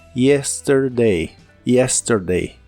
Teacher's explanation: la y en inglés suena como una i pero muy suave